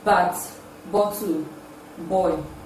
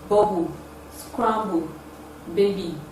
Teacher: There is always a total obstruction of air in the oral cavity while producing this sound, thereby causing a vibration in the vocal cord. The sound is produced with the two lips, therefore it is a voiced bilabial plosive sound.